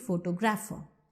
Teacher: When you say photographer, you are stressing on gra. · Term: stress shift